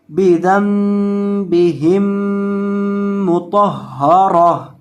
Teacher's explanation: وقف کی حالت میں اس گول تا کو ہائے ساکنہ سے یعنی ساکن ہا سے بدل کر پڑھیں گے